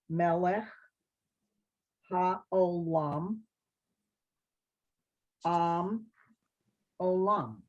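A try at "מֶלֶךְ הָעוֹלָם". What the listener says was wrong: Yes, very nice.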